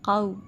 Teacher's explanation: زبر کے بعد واو ساکن کے آنے کے بعد ہم اس میں موڑ پیدا کرتے ہیں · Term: لین